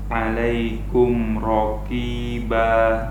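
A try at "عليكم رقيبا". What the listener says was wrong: Banyak kurang panjang sedikit. Itu seperti kaf lagi.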